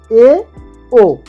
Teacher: এই এ এবং ও উচ্চারণের ক্ষেত্রে ই এবং উ উচ্চারণ ক্ষেত্রে যতটা মুখ ভরে ছিল ততটা কিন্তু মুখ ভরে না, একটু খোলা, সেই জন্য এটা অর্ধ সংবৃত স্বরধ্বনি।